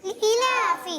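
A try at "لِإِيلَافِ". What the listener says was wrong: یہ غلط ہے. اس کو کیا پڑھنا ہے ہم نے؟ لإیلافی. یعنی یا مدہ کو بھی کھینچیں گے اور کھڑی حرکات کو بھی کھینچیں گے.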